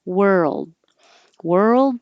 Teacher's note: keep your voice on As you move from the r to the L position